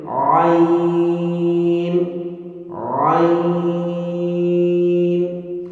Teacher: وسط حلق سے یعنی گلے کے درمیان سے